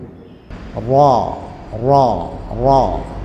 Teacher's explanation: അടുത്തത് റാ 10ാമത്തെ അക്ഷരം. നാവിൻ്റെ തലയുടെ മുതുക് മേലെ മുൻപല്ലിൻ്റെ ഊന്. അഥവാ നാവിൻ്റെ തലയുടെ മുതുക് എന്ന് പറയുമ്പോൾ ഈ അടിഭാഗം അത് മേലെ മുൻപല്ലിൻ്റെ ഊൻ.